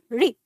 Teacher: उच्चारण करना है आपको ये छोटी ई के साथ, जल्दी री। जीभ होनी चाहिए वहां जहां ट को बोलने पे थी, उसको कहते हैं मूर्धा